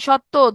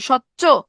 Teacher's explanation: সচ্চ, চয়ের মতো হয়ে গেছে। ত পরিবর্তন হয়ে চ হয়ে গেছে। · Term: অনন্য সমীভবন